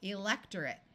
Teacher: Notice that the suffix A-T-E takes on a muffled schwa sound of or I rather than a clear long A sound because suffixes are rarely accented in English words.